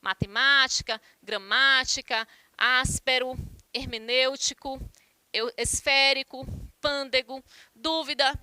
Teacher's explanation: vocês podem observar aí que o acento recai na antepenúltima né então observem que todas recebem um acento É uma regra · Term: proparoxítonas